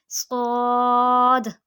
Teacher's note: زبان کی نوک اور دونوں دانتوں کے اندرونی کنارے سے